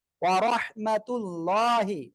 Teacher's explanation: আল্লাহ শব্দের লামের ডানে জবর মোটা আওয়াজে পড়তে হবে